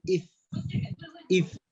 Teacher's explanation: بطن الشفة هذه الذي في الأسفل، أطراف الثنايا التي فوق، فتخرج مخرج الفاء فنقول إف هكذا في الأسفل.